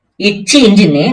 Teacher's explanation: ரெண்டாவது இது ரெண்டாவது வருது பாத்திங்களா அத என்ன பண்ணிக்கோங்க நாக்குடைய நடுப்பகுதி அன்னத்துடைய நடுப்பகுதியை தொட்டுது அப்படின்னு ஞாபகம் வச்சுக்கோங்க எச்சு இஞ்சின்னு நாக்குடைய நடுப்பகுதிய மேல நடு அண்ணனத்துல ஒட்டணும். இடை நாவையும் நடு அண்ணனத்தையும் தொழுவுதல் உருவாகும்.